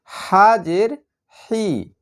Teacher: হাবর জবর হা জের হি একদম বাতাসের সঙ্গে হা জের হি গলার মাঝখান থেকে সম্পূর্ণ বাতাসটা বের হয়ে যাবে